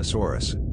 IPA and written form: ʃaʊˈsɔːrəs (Xiaosaurus)